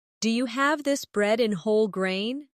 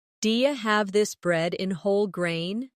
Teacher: In connected speech, do you becomes dia